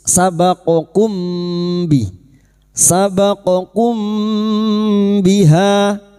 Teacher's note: Sekarang di sini kita wasal atau terus, sabaqakum biha, mim sukun bertemu ba, ikfa syafawi. Mim sukun kita baca samar dan mendengung, siap membunyikan huruf depannya yaitu huruf ba, dan mendengung selama 3 harokat